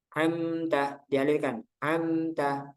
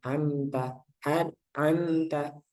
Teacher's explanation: mimnya jangan sampai mantul, dijaga. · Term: mim sukun